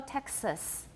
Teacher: What vowel do I have in the second syllable of Texas? It's a schwa, definitely a schwa.